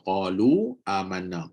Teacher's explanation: Bila kita sambung qalu dan amanna, dia jadi majaiz 4 atau 5 harakat. Bila berhenti, dia still ada mad, iaitu qalu.